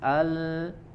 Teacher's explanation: huruf lam sukun ya tipis